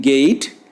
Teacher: That means E is the second element in this diphthong. The lips change from a neutral position to a loosely spread position. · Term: unrounded diphthong